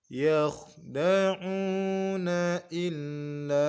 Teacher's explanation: huruf lam kita baca mat 4 sebab setelahnya adalah alif atau hamzah.